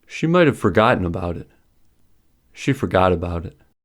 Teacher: take the same amount of time to finish despite the difference in the numbers of words